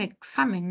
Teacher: la x en ciertas palabras tiene doble sonido suena como ks